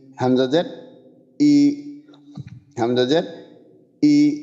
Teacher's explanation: হলক অর্থাৎ কণ্ঠনালীর শুরু একবারে বুকের কাছে, ওইখান থেকে হামজার উচ্চারণ ই।